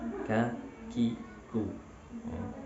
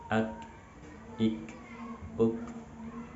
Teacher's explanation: Ketika menyebutkan huruf kaf, nafas banyak yang keluar. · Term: hams